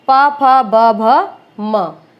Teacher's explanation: ओष्ठ है, ओष्ठ है, आप सिंपल सी बात है, उच्चारण के समय क्या होगा, दोनों ओठ आपस में स्पर्श करते हैं, प फ ब भ म, ये भी ओष्ठ है क्योंकि ये आपस में स्पर्श करते हैं।